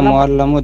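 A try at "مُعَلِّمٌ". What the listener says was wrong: মুআল্লামু বলছেন, লামের উপর জবর কেন দিচ্ছেন? মুআল্লামুন নাকি মুআল্লিমুন?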